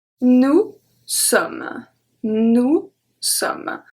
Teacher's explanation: I stop at M, so we don't pronounce the E, we don't pronounce the S. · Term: silent letters